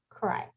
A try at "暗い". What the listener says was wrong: When you're trying to speak Japanese, you want to make sure you're pronouncing each syllable. So instead of connecting all the syllables together, you have to say them discreetly. So kurai consists of three syllables. Ku, la, I. And whenever you pronounce each syllable, you change the shape of your mouth and tongue. La, I.